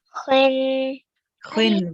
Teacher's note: So when you read the kha, you round your mouth a bit. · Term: thick letter